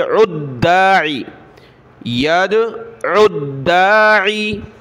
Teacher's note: سخت کیا فتولى عنهم یوم یدعو الداعی یا دال زبر ید عین کو آگے دال کے ساتھ ملائیں گے